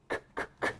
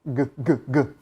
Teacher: So again, k, k, k, voiceless, g, g, g, voiced. The chi has that air hissing out with it.